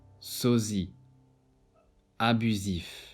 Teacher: S often between 2 vowels is pronounced as Z, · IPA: /z/